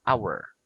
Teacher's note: some words that begins with the letter H starts with a vowel sound because the letter H is silent